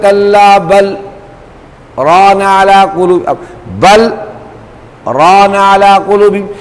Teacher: آواز بند ہو جاتی ہے لیکن سانس نہیں ٹوٹتا، اس کو کہتے ہیں سکتہ. اور اسی میں ایک اور ہوتا ہے سکتے سے ذرا زیادہ سانس کو روک لینا، اس کو کہتے ہیں وقفہ.